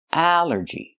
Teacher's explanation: The stress is on the first syllable. Allergy. Allergy is countable.